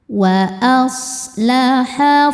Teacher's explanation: Shad itu punya ciri khas sifat yang dinamakan shofir. Sofir artinya berdesis ya.